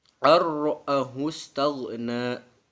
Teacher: Jadi nunnya tidak dibaca, langsung aja ke kata berikutnya yaitu ro. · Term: idgham bila gunnah